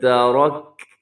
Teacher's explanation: را اس کے اندر پر ہے، تا اور کاف کو بریک رکھیے گا۔ یہاں بھی رموز اوقاف میں سے جیم ہے تو آپ یہاں پہ بھی وقف کر سکتے ہیں، آخر میں کاف کو ساکن کریں گے۔